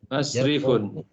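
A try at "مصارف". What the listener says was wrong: Masarifu. Masarifu tidak boleh tanwin ya. Masarifu karena dia termasuk ismul ladzi la yansarif ya. Jamak-jamak yang tidak boleh tanwin. Jadi masarif sama dengan madarisu, makatib.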